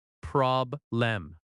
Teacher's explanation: Problem has stress on prob